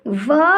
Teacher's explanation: वा वर्ग का जब हम उच्चारण करते हैं तो हमारे दांत हमारे होठों को स्पर्श करते हैं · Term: दंत व ओष्ठ